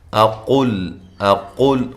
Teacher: قاف موٹا ادا کرنا ہے اور یہ لام کو باریک پڑھنا ہے